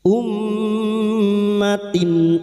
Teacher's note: Dan selanjutnya surat mim dengan tashdid, ghunnah musyaddadah. Kami melafalkannya dalam bentuk nasal selama tiga harakat · huruf mim yang bertasdid guna musaddada kita dengungan selama 3 harakat